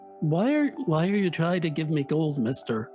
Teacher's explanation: that's just talking like your nose is stuffed